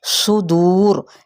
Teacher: دو پہ مد اصلی بالواو، اور جب را ساکن ہو جائے گا، را ساکن ما قبل پیش ہو تو را پر پڑا جائے گا، اب یہ باریک نہیں رہے گا